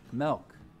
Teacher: in some utah accents though some front vowels get lowered before l sounds